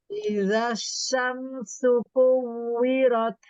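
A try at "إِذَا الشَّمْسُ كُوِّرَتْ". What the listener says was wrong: Coba sekarang shin yang titik 3 itu dengan tengah lidah dipaskan lagi. Idasya. Taknya beri hams ya. Rot. Lalu rotnya ditafkhim.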